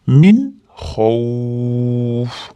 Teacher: Min xavf beda izhor bo'lyapti. Nunni aniq chiqaramiz, ushlab turmaymiz.